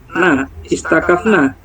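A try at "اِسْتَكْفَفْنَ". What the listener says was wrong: Kan fa-nya dua. Satu hidup, satu mati. polanya ifta'ala. Ini huruf kembar. istakafafna. Kan istaf'ala Pak.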